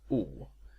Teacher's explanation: this is pretty much the same vowel as in English pool and school but is pronounced slightly further to the back of the mouth is the same sound commonly written with a u in languages